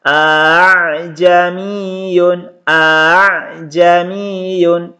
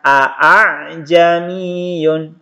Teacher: ini dibaca jelas A ni tadi tulisannya teman-teman scan a kemudian Hamzah yang kedua dibaca samar atau dibaca ringan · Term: tashil